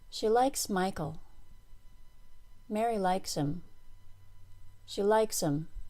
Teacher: pronouns were made smaller by saying them more quickly and quietly the verb likes along with the names of the people were stressed by saying them more loudly and slowly · pronouns whether they were subject pronouns or object pronouns were unstressed the pronouns were made smaller by saying them more quickly and quietly